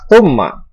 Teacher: gunnah musyaddadah karena ada huruf mim yang bertasydid. Cara membacanya berdengung dengan yang lama.